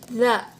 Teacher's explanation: ujung lidah kita itu bertemu dengan gusi bagian atas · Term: huruf da